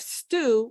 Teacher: We have stew with no puff of air.